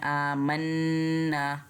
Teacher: यहाँ पे हमने मीम को नून से गुन्ना करते हुए मिलाना है, आमन्ना, और एक अलिफ जितना लंबा भी खींचना है।